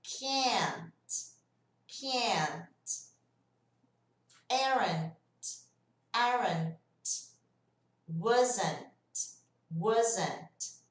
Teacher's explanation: Perceberam que o T ficou bem sutil? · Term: T, bem sutil